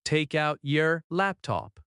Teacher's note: Notice how the T at the end of take connects to out. That linking is very common in American English, and when you recognize it, listening becomes much easier. · In fast speech, take out often links and sounds like ta-kout.